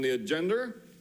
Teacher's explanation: Did he just say agenda with an R on it?